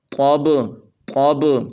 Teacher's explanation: طا کو موٹا پڑھنا ہے